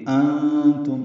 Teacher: انتم نون ساکن و تان کی وجہ سے اخفا ہے، نون کی آواز چھپائیں گے، میم ساکن پہ اظہار شفوی ہے۔